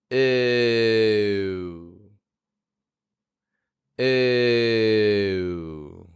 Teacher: slowly move the corners of your lips inwards to form a W glide